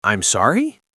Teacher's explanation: with my voice going up, that means I didn't hear you or I am confused